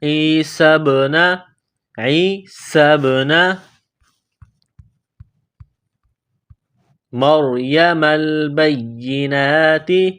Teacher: آواز پیدا کرنی ہے، سین کو با کے ساتھ ملانا ہے، با ساکن ہے، یہ حروف قلقلہ ہے تو یہاں با پر قلقلہ کریں گے